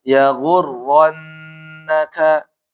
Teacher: ra fathah dan dia ada tasydid, maka apa? Tafkhim.